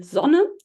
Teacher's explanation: a syllable initial position this sound is always voiced so so the German word for son would be zon with a voiced uh fricative